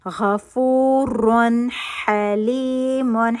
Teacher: حا حلق کے درمیانی حصے سے نکلے گا